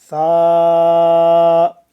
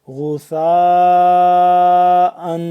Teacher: ثا نرمی کے ساتھ پڑھیں گے، زبان کو ذرا سا باہر نکالیں گے دو دانتوں کے درمیان